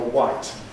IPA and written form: waɪt (white)